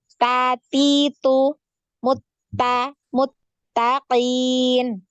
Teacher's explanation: ya di mana makhrajnya ta, ya di punggung lidah nempel di pangkal ya gigi seri atas.